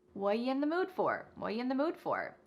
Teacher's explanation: The word are is gone and the word you has been reduced to y. So when we link together what and you it's super fast. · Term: reduction